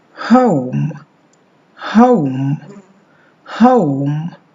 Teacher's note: The vowel position for the beginning of this is the same as for the schwa.